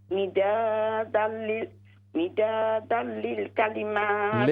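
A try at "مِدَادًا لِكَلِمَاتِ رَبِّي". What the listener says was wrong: लिल नहीं है, मिदादल लिकलिमाति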